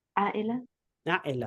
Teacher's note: there's always a hamza in front. Now, in formal Arabic, the hamza is a glottal stop